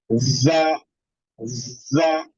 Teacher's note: जा को जो हमें पढ़ना है विद हार्डनेस पढ़ना है और विद एम्प्टी माउथ पढ़ना है। जा, जा। तो इसके अंदर थोड़ी सी शिद्दत पाई जाएगी, सख्ती जिसको कहते हैं हम, वो पाई जाएगी।